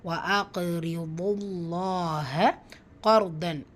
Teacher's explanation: காஃப் வல்லின எழுத்து ஃபத்தாவில் வந்திருக்கு, ஹெவியாக ஓதணும். ரா சுக்கூன் பிடிச்சி முந்தைய இடத்துல ஃபத்தா வந்திருக்கிறதுனால அந்த ரா சுக்கூனை வல்லினப்படுத்தி ஓதணும்.